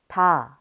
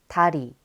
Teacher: d is a breathy stop plosive pronounced similarly to d. When a is added to d, it becomes the syllable ta.